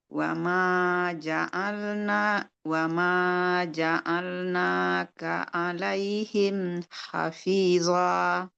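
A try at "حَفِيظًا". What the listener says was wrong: Zonya itu jangan terlalu kuat ininya ya. ya, desisnya. Sebab Allah dia nggak punya sifat yang ini yang harus mengeluarkan desis, sofir. Nah, dia nggak punya sifat sofir. Nah, yang punya sifat sofir itu zai.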